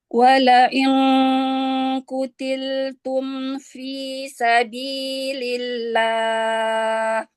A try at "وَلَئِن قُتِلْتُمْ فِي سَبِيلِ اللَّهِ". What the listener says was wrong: Ya, qafnya ditebalkan lagi.